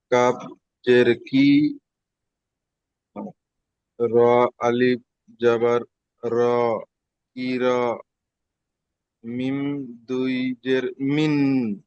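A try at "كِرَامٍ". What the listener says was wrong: দুজের হবে না, কারণ এখানে তানবিনটা মিম হয়ে যাচ্ছে, তাই এখানে তানবিনের উচ্চারণটা হবে না, দুই জের হবে না, এক জের হবে। মিম মিম জের মিম। মিন হবে না, মিম।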